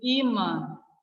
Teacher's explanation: Veja que esse imã, o I, ele é oral, né? Que não usa as minhas fossas nasais. Ele, além de ser oral, ele também é tônico, porque ele é mais forte.